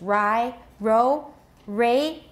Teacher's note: Retroflex means that the tip of the tongue is curled back